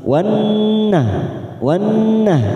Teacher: kita tekan 3 ketuk namanya bacaan gunnah